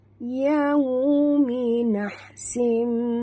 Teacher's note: Ya dengan waw dua-duanya adalah huruf lin, jadi sebut dengan lunak. Muncungkan mulut.